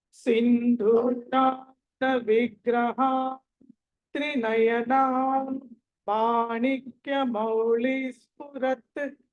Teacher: పవర్గంలోని పంచమాక్షరం మా కాబట్టి ఆ అనుస్వారానికి బదులుగా అక్కడ మా అని చదవాలి. సో ఇప్పుడు ఎలా చదవాలంటే సింధూరారుణ విగ్రహ త్రినయనా మాణిక్యమౌళి స్ఫురత్.